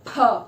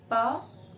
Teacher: अब उदाहरण के लिए फिर से अपने मुंह के लिप्स के पास हाथ लगाएंगे और आप बोलकर देखेंगे प फ, फा में ज्यादा हो रहा है तो वो हो गया एस्पिरेटेड, अनएस्पिरेटेड हो गया पा।